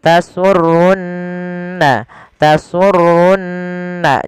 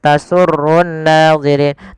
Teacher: Pada lafal di sini ada nun berharokat tasydid, maka ia kita baca dengan bacaan gunnah, ditahan suara nunnya. Tasurunna, tasurunna, jangan langsung tasurun nadhirin, tapi tahan dulu.